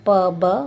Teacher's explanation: जिन ध्वनियों का उच्चारण होंठ द्वारा किया जाता है, मतलब लिप द्वारा, जैसे प ब, उन्हें बिलैबियल कहते हैं।